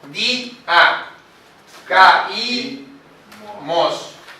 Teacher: Se separa. El hiato hace que se quiebre la sílaba, se parta la sílaba.